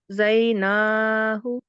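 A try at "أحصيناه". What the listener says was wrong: So this letter is sod, not dod.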